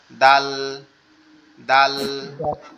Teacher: জিহ্বার আগা সামনের দুই দাঁতের গোড়ার সঙ্গে লাগবে, লেগে উচ্চারিত হবে দাল দাল এভাবে।